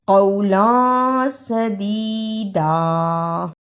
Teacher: اخفا ادا کرنے کا طریقہ تنوین کی آواز کو تھوڑی دیر ناک میں چھپا کر غنہ کرنا ہے۔